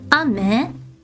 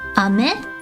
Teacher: Ame, if you go down, ame, that is rain that falls from the sky. If you go up, ame, that is candy, like the sweet candy that we eat. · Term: pitch accents